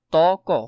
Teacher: ব বর্ণের উচ্চারণ, ব বর্ণের সাধারণ উচ্চারণ ব এর মতো, তবে ফলা হিসেবে এই বর্ণের উচ্চারণ স্বতন্ত্র আছে, মানে ফলাতে মাঝে মধ্যে এটা বফলাটা চেঞ্জ হয়ে যায়। শব্দের আদিতে বফলার উচ্চারণ হয় না